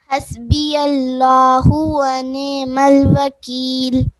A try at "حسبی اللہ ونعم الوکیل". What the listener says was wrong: حسبی اللہ. جی عین کو تھوڑا سا آپ نے کلیئر کرنا ہے، ٹھیک ہے.